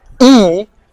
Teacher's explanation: So for example, if you're pronouncing the sound E, you can feel your tongue is like very close to the top of your mouth